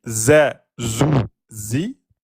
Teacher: La lettre zay est une lettre qui n'est pas emphatique, elle est amincie. Donc, on va prononcer z, zou, zi, normal.